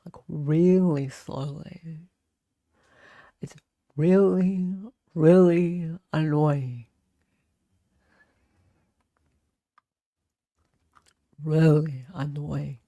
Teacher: She has a slight vocal fry. And she talks really slowly.